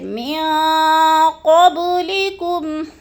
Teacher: من پہ اخفا کرنا ہے، آواز کو ناک میں چھپا کر ہم نے پڑھنا ہے ، نون ساکن کے بعد قوف آگے حروف اخفا میں سے،